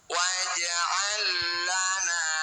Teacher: Lam sukun bertemu lam, 2 huruf yang sama persis bertemu, disebut bacaan idgham mutamatsilain. Cara bacanya huruf pertama masukkan huruf kedua. Waj'al lana tanpa dengung.